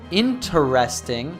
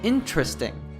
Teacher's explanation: notice that it goes from four syllables interesting to just three